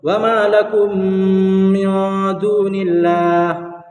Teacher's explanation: میم ساکن کے بعد میم ہے، اس لیے ادغام شفوی ہوگا، گنہ کر کے پڑھنا